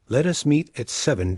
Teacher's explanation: You sort of hammer a nail with the last word. Your voice falls down to the lowest note of your range. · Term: descending intonation